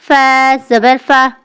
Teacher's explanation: لام زیر لی مخرج زبان کی نوک اوپر کے مسوڑوں کے قریب سے ادا ہوتا ہے، حرکت اس کی زیر ہے۔ اب فا زبر فا مخرج نچلا ہونٹ اور اوپر کے دانت سے یہ ادا ہوتا ہے، حرکت اس پر زبر ہے۔